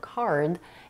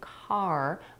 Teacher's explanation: if you drop the final consonant d in the word card, it might sound like car, which is a different word.